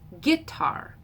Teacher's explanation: says it as a trochee with the first syllable stressed. He says guitar.